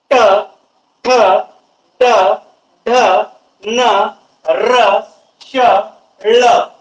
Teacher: ट ठ ड ढ न र श ळ यांचा जेव्हा तुम्ही उच्चार करत असता त्यावेळेस मूर्धा या भागांचा मोठ्या प्रमाणात स्पर्श होतो. जिभेचा जो काही स्पर्श आहे मूर्धा या भागाला स्पर्श होत होता. · आपली जीभ मूर्धा या भागाला स्पर्श करते आणि एकदम जोराने यांचा उच्चार केला जातो. यावरून या वर्णांना मूर्धन्य वर्ण असं म्हटल्या जाते.